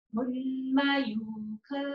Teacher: आधा ना है इसमें और य पर बड़े ऊ की मात्रा है, तो हमें य को लंबा खींचना है।